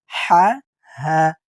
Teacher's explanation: গলার হলকের মাঝখান থেকে উচ্চারণ হবে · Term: ছোট হা